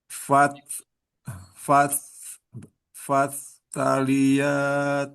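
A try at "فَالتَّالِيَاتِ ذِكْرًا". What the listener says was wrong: Kalau tasdid nggak perlu di sukunya itu nggak perlu ada hamas. Langsung fatta fattalia. Ya, nah, tadi yang awal-awal terlalu banyak hamas ya. At, it, ut.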